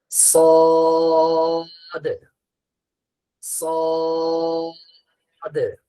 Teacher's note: সদের উচ্চারণটা জিহ্বার আগা সামনের নিচের দুই দাঁতের আগার সঙ্গে লাগবে। এই ঠিক লাল পয়েন্ট যেখানে এখানে লাগবে।